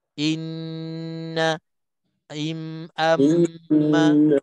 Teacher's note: Yang hidung tu, yang dengung tu, kena panjang sampai 2 harakat. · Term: wajibul gunnah